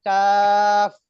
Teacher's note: যখন চাপ দিবেন কাফের, যখন হরফটা উচ্চারণ শেষ হবে তখন বাতাস চালু রাখবেন